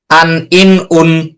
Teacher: এই উচ্চারণটা আমরা যখন করতেছি তখন আমাদের উচ্চারণটা নাকের থেকে আসতেছে। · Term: গুণা